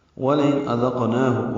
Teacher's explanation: حمزہ کو نون سے ملائیں گے، نون ساکن پہ اظہار ہے، آگے حمزہ آ رہا ہے، اظہار حلقی